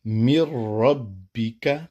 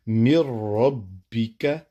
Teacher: لام اور را میں بغیر غنہ کے، مر ربک، نون کی آواز نہیں آئے گی، مر ربک۔